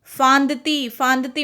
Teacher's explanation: नाक और मुंह दोनों में से आवाज आ रही है